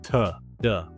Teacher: The T and D sounds stop the air completely for a moment, creating a little pop. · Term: stop and pop